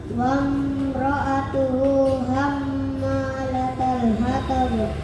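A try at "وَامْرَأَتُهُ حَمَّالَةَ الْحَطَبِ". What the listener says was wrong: Ya, mimnya nggak panjang ya. Wamro'atuhu, Udah bagus wamronya, tinggal hamma mim tasdidnya ya.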